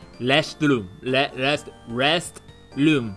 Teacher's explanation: Japanese like you know it's like they combine their rnl so it's like a weird rolled r